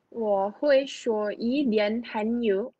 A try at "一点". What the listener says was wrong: 一点, jangan ada dian-dian, ha? 一点.